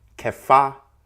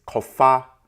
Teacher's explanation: with the O vowel as opposed to the arbitrary E that Egyptologists inserted. So in the Akan language, the vocalization is kofa, which of course references to fetch.